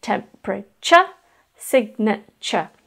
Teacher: is pronounced in particular the last sound segment tu ar e it's as if the word temperature has the sound CH in it · it's denoted by the tu re which has no CH even though you can hear it in there